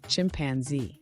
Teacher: create a buzzing sound between the tongue and the Upper Front Teeth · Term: z sound, voiced alveolar fricative